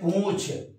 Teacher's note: इसमें चंद्र बिंदु होता है, और जब भी चंद्र बिंदु जहां लगता है उसका उच्चारण मुंह और नाक दोनों से होता है